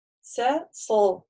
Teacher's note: он как бы и при задней части языка немножко прогибается, вот прогиб такой, и за счет этого звук, он такой встает более твердый, да, то есть он такой чуть шире, тверже, вот выше поднимается за счет этого, а место нажатия у них практически, ну, там, одинаковое, плюс-минус чуть-чуть. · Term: твердая